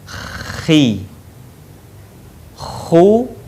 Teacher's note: huruf ini dikeluarkan dari tenggorokan yang terdekat dengan rongga mulut kita ciri khasnya terdengar suara seperti orang yang sedang mendengkur